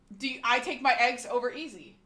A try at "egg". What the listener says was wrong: It's not egg. It's not egg, like A-Y-G. It's not egg. But it's also not egg. You have to, like, relax your, like, chest too much to say egg. It's egg. Egg. Egg. Egg. Egg.